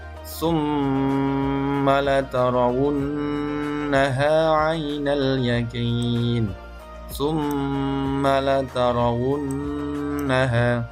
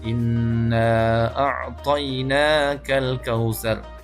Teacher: Membacanya adalah dengan menahan dengungnya mim ataupun nun tersebut 2 atau 3 harokat. Contoh di surah Al-Kautsar ayat 7, summa latarawunnaha 'ainal yaqin, summa latarawunnaha, dua huruf mim dan nun yang berharokat tasydid, maka membacanya adalah dengan didengungkan atau digunnahkan. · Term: gunnah musyaddadah